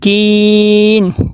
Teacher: کاف کے آگے یا مدہ آ گئی ہے، ایک الف کے برابر لمبا کریں گے اور دوسرا مد عارض وقفی بھی کریں گے جی۔